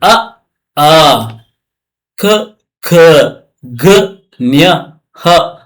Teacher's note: ನನ್ನ ಕಂಠದಿಂದ ಉತ್ಪತ್ತಿ ಆಗುತ್ತೆ. ಇದಕ್ಕೆ ಕಂಠ್ಯ ಅಂತ ಕರಿತೀವಿ